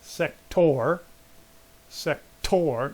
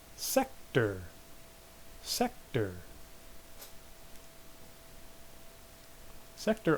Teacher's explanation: you can really hear the first syllable is accented